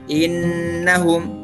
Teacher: Nah, contohnya tadi di Al-Baqarah ayat 13 tadi, innahum, sebelumnya itu adalah huruf hamzah, kemudian kasroh i, kemudian ada nun dan dia tasydid. Maka itu akan dibaca dengung 2 harakat